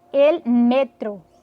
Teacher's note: No espanhol, a gente já diria el metro, a sílaba forte deixa de ser a última, como no português, e passa a ser a penúltima no espanhol. Por isso que a gente diz el metro e não el metrô, como no português é el metro em espanhol. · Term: heterotônico